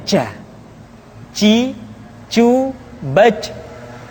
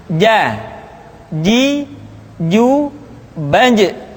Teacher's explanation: Padahal kalau kita melihat sifat yang dimiliki huruf ja, dia tidak boleh mengalir nafas karena sifatnya al-jahr, lawan dari al-hamas.